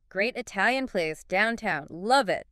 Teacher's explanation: The source explains that the emphasis tells the listener what information is most important or new. Stressing great Italian place highlights that it's not just any place, but a good one and specifically Italian.